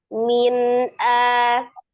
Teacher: Dia mengalir sebagian. Tidak ditahan, tidak digunakan, dibaca dengan jelas, hanya bunyi nun sukunnya dialirkan sebagian. Min a, jadi bukan min a, atau bukan juga min a, ya. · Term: tawasut